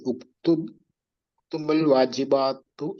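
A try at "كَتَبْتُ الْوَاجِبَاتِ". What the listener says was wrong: ആ കതബത്തുൽ വാജിബാത്ത് ഓക്കെ ഉക്തുബല്ല ആ കതബത്തുൽ വാജിബാത്ത് നിങ്ങൾ കണ്ണട വയ്ക്കുന്നുണ്ടോ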